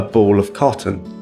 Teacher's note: Or the word of becomes əf, like a ball of cotton. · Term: weak forms